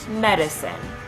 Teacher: barred I is a high Central vowel and can be heard in the second syllable of medicine